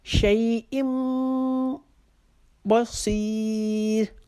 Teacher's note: صاد کو موٹا پڑھیں گے لیکن راہ کو باریک کر کے اپنی آواز کو ختم کریں گے